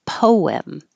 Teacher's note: your lips should round and then unround and make the invisible W